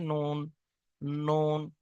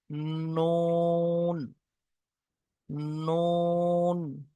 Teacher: জিভের আগা এবং তার বরাবর উপরে তালুর সাথে লাগিয়ে উচ্চারিত হয় নুন,